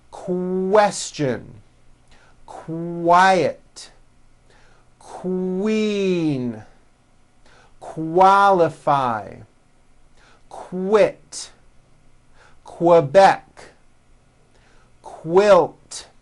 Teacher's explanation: Q sounds are made with the K sound and the W sound W put together.